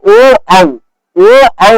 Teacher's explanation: ओ औ औ का उच्चारण कंठोस्थ से होता है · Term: कंठोस्थय वर्ण, कंठोष्ठ वर्ण